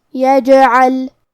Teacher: کلمت یجعل میں یہاں جیم پہ جزم ہے، تو کیونکہ جیم بھی حروف القلقلہ میں سے ہے لہذا ہم یہ حرف کو ہلاتے ہوئے یہ کلمہ کو پڑھیں گے